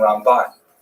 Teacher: Ramban is pronounced with the emphasis on the second syllable